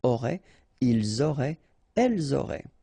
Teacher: ENT, you don't pronounce it